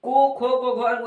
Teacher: ये सभी को कंठ से बोला जाएगा यानी ये जो कंठ है वहां से उच्चारण होगा उच्चारण के